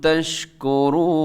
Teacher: تشکرون میں شین کو آپ نے ہلانا نہیں ہے، اور تشکرون میں را بھی موٹا پڑا جائے گا، اس میں واو مدہ ہے، کھینچ کے اس کو پڑھیے گا تشکرون.